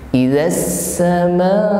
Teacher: ma kita panjangkan 4 harokat atau 2 kali ayun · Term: mad wajib mutasil